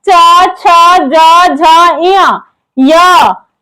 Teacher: ये किससे बोला जाता है, तो तालु से बोला जाता है, इसीलिए इसको तालव्य वर्ण कहा जाता है।